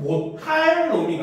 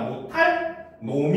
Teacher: 리을 받침이지만 입성으로 짧게 소리 납니다. 그래서 이거는 못할 놈이가 아니라 못할 놈이 이렇게 짧게 끊어서 발음해야 된다.